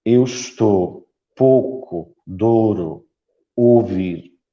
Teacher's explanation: em Lisboa não temos o ditongo ou ou como tenho Norte em vez destes ditongo usamos usamos mesmo ou ou fechado